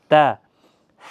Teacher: ثنائے اولیہ کی جڑ کے ساتھ زبان کی نوک جب ٹکراتی ہے تو تا ادا ہوتا ہے